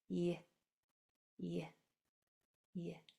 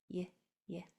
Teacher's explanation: your lips are stretched wide, your teeth are almost closed, and the back of your tongue is working very minimally toward the back of your throat. It's y. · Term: consonant sound Y